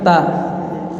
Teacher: Dari segi terangkat atau turunnya pangkal lidah, ta itu turun, ta biasa kan, ta pangkal lidah kita turun. Dari segi lengket enggak sebagian besar lidah, ta itu tidak lengket, ta tidak lengket ke langit-langit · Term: infitah